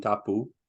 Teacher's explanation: position and of course the difference is aspiration in English so what is an unaspirated p in Tahitian probably will be pronounced as an English B